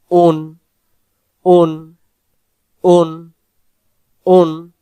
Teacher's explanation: এবার আসেন হামজাহ দুই পেশ উন। হামজা অক্ষর হলকের প্রথম থেকে শক্ত করে পড়তে হবে উচ্চারণটা